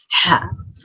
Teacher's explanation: اس میں ہمس ہے، whispering sound ہے، حلق کے بیچ کے حصے سے ادا ہوگا